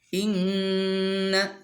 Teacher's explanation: Nun bertasydid. Itu hukumnya gunnah, artinya harus dibaca dengung.